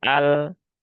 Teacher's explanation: pastikan ujung lidahnya nempel di langit-langit depan ketika sukun al bukan ar. Nah, kalau ar dia jadi ro. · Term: lam sukun, lam yang sukun